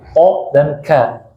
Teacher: Karena q dan k itu makhrajnya berdekatan sekali. Q dan k itu di pangkal lidah. Ya, q paling belakang, k depannya sedikit. Q dan k. Walaupun secara sifat dia berbeda.